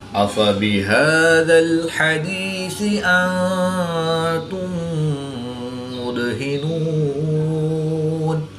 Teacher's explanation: دال ساکن ہے، یہ حروف قلقلہ میں سے ہے تو یہاں پر ہم قلقلہ صغریٰ کر کے پڑھیں گے